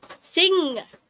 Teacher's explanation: we're going to hold the contact with the airflow through our nose · use the back of our tongue against the soft palate like we did with k and g. But we're going to hold the contact, let the air flow through our nose